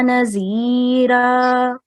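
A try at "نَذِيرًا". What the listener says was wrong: Okay, it's not ra. If you're pausing, it will be carrying a fatha. Nazira. It's a thick ra. Yeah, it's a thick ra. Yeah, it's thick ra.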